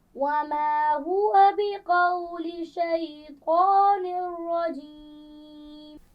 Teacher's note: اور شیطان الرجیم، نون کے نیچے تنوین ہے، 2 زیر، اور اس کے بعد را آ گئی ہے، تو کیا یہاں پر غنہ کیا جائے گا؟ نہیں